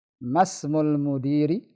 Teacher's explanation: Tapi karena dia hamzah wasal tidak dibaca ketika di tengah. Langsung mimnya ke sin.